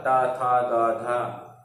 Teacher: दांत और जीभ की स्पर्श से बोले जाते हैं, इसलिए इन्हें दंत वर्ण कहा जाता है।